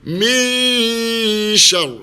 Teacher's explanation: Min syarri ma, min, dua harakat kita dengungkan. Waktu kita dah dengungkan ikhfa ini, maka mestilah mulut kita bentuk shin, dan masukkan dengung dia.